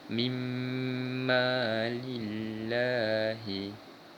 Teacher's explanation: memasukkan bunyi nun mati ini pada huruf seterusnya tanpa membunyikan langsung huruf nun mati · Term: Idgham Bighunnah